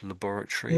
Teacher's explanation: we don't say Tory, we say… we say tree